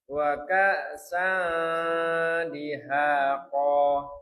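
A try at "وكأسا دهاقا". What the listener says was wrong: Lagi Pak. Wa ka, kannya tipis. Wa ka'san dihaqa. Nih, jadi itu diangkat lagi ke rongga hidung. Bukan di mulut semuanya, Pak. Itu di mulut semuanya. Kalau bisa dihaqa.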